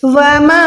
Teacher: आपने मीम अलिफ ज़बर मा को 2 सेकंड कम से कम खींच के पढ़ना है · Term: छोटी वाली मद